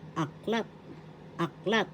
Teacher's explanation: The accent is in the second syllable, so you pronounce it as retrato.